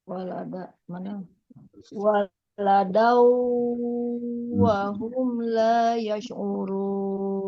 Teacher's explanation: fathah tanwin bertemu dengan huruf waw bertasydid maka idgham bi gunnah. Harus dengung yang lama.